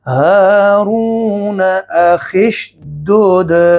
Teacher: अगर किसी ने वसल किया, वसल की सूरत में हमज़ा हज़फ हो जाएगा, गिर जाएगा